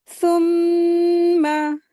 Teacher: آیت 16 ثم، اس کو ایسے ادا کریں گے، میم مشدد ہے، غنہ کر کے پڑھتے ہیں اس کو